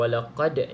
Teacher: kalau walaqad ni Qalqalah kubra sebab berada di hujung perkataan